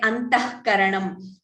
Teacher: Only when visarga is followed by ka or kha, then we get the jihva muliya.